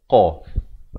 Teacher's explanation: Qa di mana makhrajnya? Di pangkal lidah.